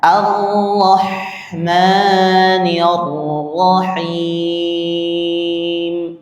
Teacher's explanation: Jangan sampai H yang kedua itu dia ee terbaca H tasydid ya.